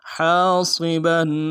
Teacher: علیکم حاصبا ہا کے ساتھ الف مدہ ہے، ہا کو گہرائی سے ادا کریں گے، الف مدہ کو ایک الف مدار میں کھینچیں گے، صاد کو موٹا ادا کریں گے، با کے اوپر تنوین ہے، غنہ کریں گے، وقف کی صورت میں با کو الف سے بدلیں گے۔